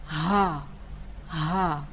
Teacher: ha itu pada pangkal tenggorokan atau dasar tenggorokan, langsung kita keluarkan bunyi ha itu dari dasar itu. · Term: ha besar